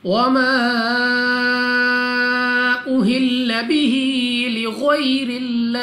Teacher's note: हा के नीचे खड़ी ज़ेर 2 सेकंड तक लंबा करना है